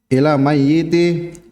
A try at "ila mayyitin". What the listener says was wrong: tanwin